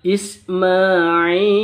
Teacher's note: berada di waqaf berada di pemberhentian akhir kalimat maka disebut dengan Mad Arid Lis sukun panjangnya boleh dua ketuk boleh 4 ketuk